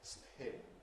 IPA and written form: spʰɪn (spin)